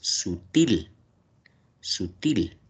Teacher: ¿Dónde está la mayor fuerza de voz? Til. En til. Claro, es una palabra aguda.